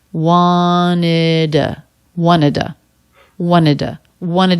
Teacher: And when the word before to, T-O, ends in a D, it's common to just drop the T sound altogether and just put a schwa at the end.